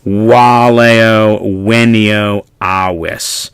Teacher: the V being pronounced as a W